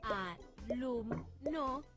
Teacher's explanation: lo que tenemos que pronunciar con más fuerza de las tres es lum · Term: sílaba tónica